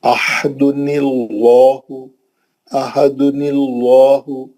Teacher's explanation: نون پہ جو زیر دیتے اس کو عارضی زیر رہتا ہو، پرماننٹ زیر نہیں ہے، وہ پکا زیر نہیں ہے، وہ اوریجنل زیر نہیں ہے، وہ اصلی زیر نہیں ہے، وہ عارضی زیر ہے. عارضی زیر لام کو پتلا نہیں کر سکتا، لام جلالہ موٹا رہیں گا، کیوں، وہ جو زیر ہے عارضی ہے.